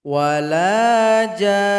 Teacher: Kemudian sebelumnya panjangkan dulu jim ini 6 ketukan atau 6 harokat. Kemudian dengungkan huruf nun ini 2 ketukan.